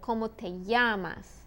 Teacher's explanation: double l sounds more like a y